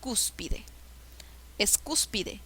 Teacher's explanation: La sílaba que lleva la mayor fuerza de voz es cus. Es la antepenúltima sílaba. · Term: esdrújula